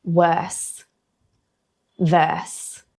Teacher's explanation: Keeping your tongue down for worse and verse, because we don't pronounce the R in Australian English. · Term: non-rhotic nature